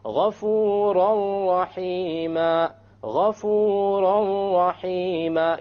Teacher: You don't say ghafuran rahima, you say ghafuran rahima, ghafuran rahima. You don't hear an N sound because you drop it.